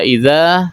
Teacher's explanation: ada alif sebelumnya berharokat fathah, maka disebut mad asli atau mad tabi'i, panjangnya 2 harokat